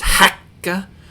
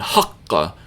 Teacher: Same basic sound, ka, ka, ka, but qaf is pronounced back further in your mouth and with a lower pitch.